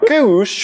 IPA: kʼùʃ